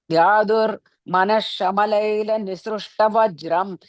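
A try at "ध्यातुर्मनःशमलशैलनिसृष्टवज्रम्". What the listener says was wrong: Shamala, one word. And then Shaila, another word. So Manash, Shamala, Shaila.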